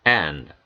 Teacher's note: N 다음에 오는 D 사운드는 and 이렇게 발음하지 않으시고요. 약하게 입안에서만 처리합니다. and가 아니고 and.